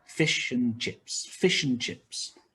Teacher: for example fish and chips and is weak